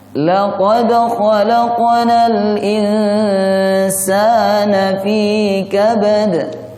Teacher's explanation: huruf kha ini huruf tenggorokan, tidak terlalu ngorok dan tidak terlalu tipis.